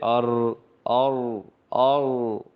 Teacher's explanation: صفت تقریر کا مطلب ہے را ادا کرتے وقت، پڑھتے وقت کنارہ زبان میں کپ کپی سی ہو جانا، جیسے ار، اور، اور، تو یہ جو تھوڑی سی آواز ہے یہ جو ہل رہی ہے ان کو صفت تقریر کہتے ہیں۔